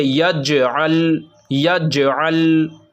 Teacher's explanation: हमको जीम में आवाज़ लौटानी है और ऐन लाम में आवाज़ नहीं लौटाना, क्योंकि जीम हुरूफ़ क़लक़ला का हर्फ़ है और लाम जो है वो हुरूफ़ क़लक़ला का हर्फ़ नहीं है।